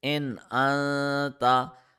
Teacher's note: we need to hide the sound of noon in our nose, and secondly we need to stretch the sound for 1 second, and thirdly we must be careful not to touch our tongue anywhere while reading this rule. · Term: Ikhfa